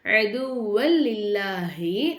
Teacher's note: ஒரு எழுத்தை இன்னொரு எழுத்தோட ஜாயின் பண்ணி குன்னா செய்யாம ஓதணும் அதுதான் இதம் பிலாகுன்னா உடைய சட்டம் அப்போ அதுவல் லில்லாஹி அப்படின்னு நாம ஓதணும்